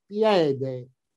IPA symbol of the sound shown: è